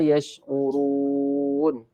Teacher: Ra tebal sebab ra berbaris depan